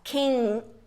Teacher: Prepara tudo pra fazer o G, mas não faz. King. E para antes. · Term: som de canga